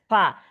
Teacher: সা যখন বলবেন, এই যে জিহ্বাটা দাঁতের হালকা আগে লাগবে। সা, সা জবর না সা।